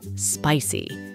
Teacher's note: the word is stressed on the first syllable